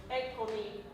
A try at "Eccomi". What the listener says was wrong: Eccomi. Yeah, so the vowel that I hear that could you can verticalize a little bit more is the E.